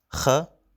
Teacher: It's a hard Kh which doesn't exist in English but in some other Indo-European languages like German, Kh. For example, Kho or Mach.